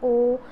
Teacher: ओ बोला तो हमारा होठ एक वृत्ताकार आकार ले लेता है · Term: वृत्तमुखी स्वर